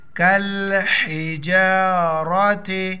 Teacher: را پر زبر ہے را کو موٹا پڑھیں گے